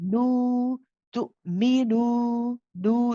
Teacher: Nu is stretched for 2 counts.